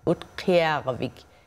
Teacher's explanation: The Ut is in like the Ut in Soot, Ut Kervik. And the what sounds like the K is produced in the way back of the throat, what we call an uvular sound